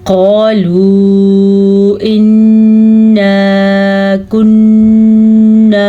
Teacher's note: قاف کو موٹا پڑھیں گے کیونکہ قاف حروف مستعلیہ میں سے ہے